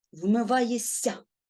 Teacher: свистячий впливає на попередній шиплячий І вони обоє стають свистячими Ми чуємо подовжений с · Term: уподібнення за місцем і способом творення